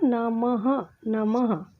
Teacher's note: इनकी जो आवाज़ निकलती है वो अह करके निकलती है। इनको जब हम बोलेंगे तब इसको हम अह की उच्चारण से बोला जाता है। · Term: विसर्ग